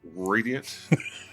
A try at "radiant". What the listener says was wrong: No, you got to roll the R. You got to roll the R.